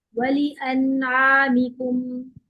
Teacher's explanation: नून पे कलकला नहीं करना होता, नून को तवस्सुत देना होता है, नून की आवाज हल्की सी चलती है।